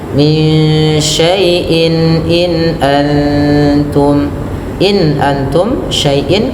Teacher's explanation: harus jelas suara nunnya dan tidak boleh ada penahanan yang lama sekali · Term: izhar halqi